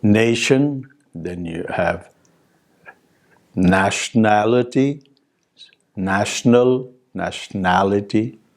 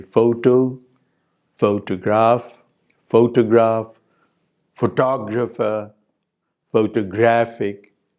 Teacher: So the primary stress is shifting in these words as new affixes are added to them. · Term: stress shift